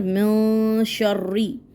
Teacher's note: اخفا یعنی کیا؟ چھپانا. کس کو چھپانا؟ نون ساکن کی آواز کو